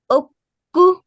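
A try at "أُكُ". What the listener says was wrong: No joining, just two short vowels. Keep them short, just for one count. Uku.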